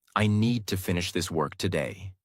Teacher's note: Need, finish, work are strong. Other words are softer. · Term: stress and rhythm